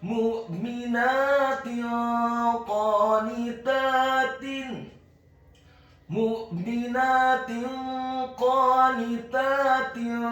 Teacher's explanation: huruf qafnya dibaca tafkhim tebal fathah 2 harokat karena harokatnya tegak. Huruf nunnya dibaca tipis tarqiq kasrah 1 harokat.